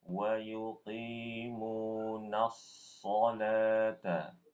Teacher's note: Pada kata as-sholat. Shod di situ tebal. Jadi langsung tebal Ibu. Setelah huruf na langsung tebal dia.